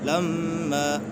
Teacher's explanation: میم مشدد ہے، نون مشدد اور میم مشدد میں ہمیشہ غنہ ہوتا ہے